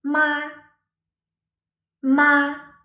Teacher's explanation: The first tone, typically high and leveled, picture a very calm and still lake.